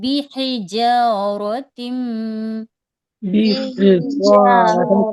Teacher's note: ہے کو ہم حلق کے درمیانی حصے سے ادا کریں گے